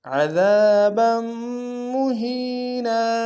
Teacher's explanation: وقف میں نون کی تنوین کو الف سے بدلیں گے